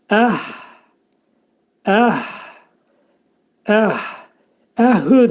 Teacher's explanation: bu hə hərfinin məxrəci boğazın aşağı tərəfindədir.